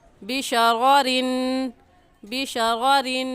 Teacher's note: اب یہاں پر ہم صفات کا خیال رکھیں گے کہ پہلے را کے اوپر زبر ہے تو اس را کو پر یعنی موٹا کر کے پڑھیں گے، اور موٹا کرنے کا طریقہ کہ آپ کے دونوں ہونٹ گول ہو جائیں، اور دوسری را کے نیچے زیر ہے تو را کو باریک کر کے پڑھیں گے، اور باریک کرنے کا طریقہ کہ آپ کے دونوں ہونٹ پھیل جائیں.